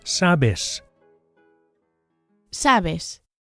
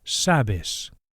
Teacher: the stress, the accent here is on the first syllable